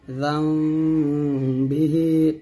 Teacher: দুই ঠোঁট মিলে গুণটা আদা করতে হবে তবে ঠোঁটের মাঝে একটা ফাঁকা রাখবেন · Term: ইকলাব